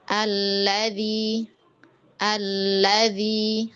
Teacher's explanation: ini alladzi ini dia akan dinaber di huruf lamnya. Di huruf lamnya yang diangkat.